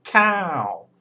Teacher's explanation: so we get a falling tone and what that means is you put a lot of energy into the word at the start and then the tone drops away